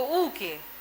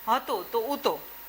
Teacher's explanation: હનો શ્રુતિનો અભાવ માન્ય ગુજરાતી ભાષામાં એ આપણે લોપ થતો જોવા મળે છે.